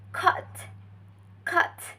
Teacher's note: It is articulated by using the central part of the tongue in low, and it's also used unrounded lip shape. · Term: low central unrounded vowels